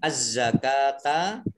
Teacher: Az-zakata alif lamnya alif lam samsiyah tidak dibaca, langsung masuk ke huruf berikutnya yaitu za, dengan ada tasdid, za-nya dibaca double. Az-zakata kaf fathah berdiri mat tabi'i, ain domah wawu sukun mat tabi'i masing-masing dibaca panjang 2 harokat.